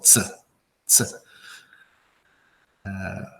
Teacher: We squeeze out like you put your tongue to your gum, and then you squeeze out air in between, and that becomes the phonetic sound, right? For ts, ts.